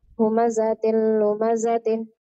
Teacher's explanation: تاء تنوين بالكسر مدغم في اللام المضمومة بغير غنة